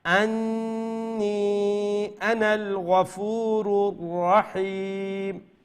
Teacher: আনা লম্বা হইতো না, এটা নুন লামের সাথে তাড়াতাড়ি জয়েন যাব।